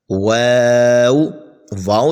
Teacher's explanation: واو جو ہے دونوں ہونٹوں کی گولائی سے ادا ہوتا ہے